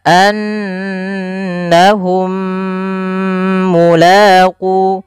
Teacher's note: Idgham mimi yaitu apabila ada huruf mim mati atau mim sukun bertemu dengan huruf mim sebelumnya, setelahnya, maka itu kita namakan dengan idgham mimi. Idgham mimi ini cara membacanya mim yang pertama masukkan yang mim kedua kemudian ditahan.